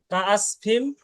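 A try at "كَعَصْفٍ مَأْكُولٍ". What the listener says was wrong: এখানে একটা গুন্না হবে ভাই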